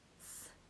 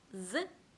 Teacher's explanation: 무성음 S와 짝을 이루는 자음은 바로 알파벳 Z입니다. Z에서 소리만 빼면 돼요.